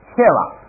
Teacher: 明里头最那个什么叫比量，说什么叫比量，见烟之火，一看烟可以想那肯定有火，哎，这就是土啊。下边是切蛙，獠牙、犬牙、虎牙，我这就是这切蛙。这个虎牙这是这个食肉动物的痕迹，犬牙、虎牙是饲肉用的。实际上，但是人是嚼牙是食素动物的标志，是来磨草的，用那个后槽牙磨草的。几蛙，这是丢了一个啊，16个是切蛙，咱们前头学过切，什么那个亲包啊，什么你一看带这个切啊，都是大的东西。这个对了，这儿我读错了啊， 他这个做比较级的时候啊，后边那个蛙读轻声